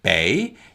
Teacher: put your hand in front of your mouth like this and say the word bae you should feel little to no air on your hand